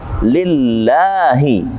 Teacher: lamnya kasrah, maka huruf Allahnya dibaca dengan tipis atau tarqiq dalam ilmu tajwid